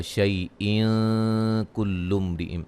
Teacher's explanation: ملانے کی صورت میں یہاں نون تنوین کا اخفا ہوگا